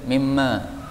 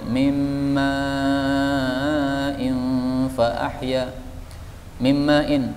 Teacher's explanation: Ini kalau dibaca berhenti boleh mimma, tetapi kalau dibaca sambung maka harus panjang